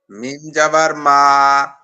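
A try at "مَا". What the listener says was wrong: মিম জাবান নাই ভাই, এটা খাড়া।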